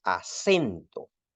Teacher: Uno esfuerza la voz sobre la sílaba sen y eso es lo que implica nuestro acento. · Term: esfuerzo de voz